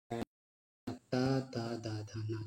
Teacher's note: ये दंत से उच्चारित होने वाले वर्ण है